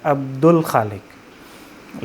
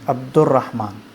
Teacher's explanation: عبد الخالق اگر پڑھیں گے تو خا ہے حروف قمریہ میں سے، یہاں پر لام کو بالکل واضح کیا جا رہا ہے عبد الخالق، لیکن عبد الرحمن میں را ہے جو حروف شمسیہ میں سے ہے، یہاں پر لام جو ہوتا ہے سمجھیں کہ وہ سائلنٹ ہو جاتا ہے اور ادغام ہو جاتا ہے، یعنی دال کو را کے اندر مدغم کر دیتے ہیں، عبد الرحمن۔